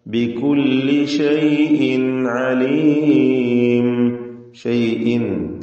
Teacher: ഷൈഇൻ തൻവീനെ ഇൽഹാർ ഹൽഖി നൽകി മണിക്കാതെ വെളിവാക്കണം